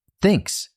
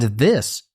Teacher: thinks, and this both have the eth slightly different. One is unvoiced, one voiced